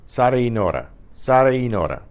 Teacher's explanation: Notice how the A in Sara, the ending, and the E for the word and, blend together. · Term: vowel blend